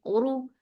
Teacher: ra for dhamma, the sound will be short and heavy. Uru, su, keep seen light.